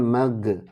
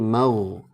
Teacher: ghain itu nggak boleh mantul, tapi harus mengalir suaranya karena dia punya sifat namanya rukhawah. Kemudian tebal karena diawali fathah.